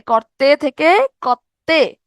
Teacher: র বিলুপ্ত হওয়ার পরে র এর ঠিক পরের যে ব্যঞ্জনটা, র এর ঠিক পরের ব্যঞ্জনটা দ্বিত্ব হবে, মানে দুইবার উচ্চারণ হবে। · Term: রকার লোপ